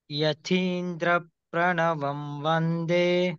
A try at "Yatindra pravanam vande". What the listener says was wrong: Not pranavam, pravanam. Yatindra pravanam vande. So when there is a rakaram for the da and pa, dra, pra, these are called dvikam. Dvikam. Dvikam means it should be uttered in a stress manner. Yatindra pravanam vande. In such a way.